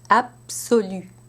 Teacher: where you have a B in the spelling but a p in the phonetic transcription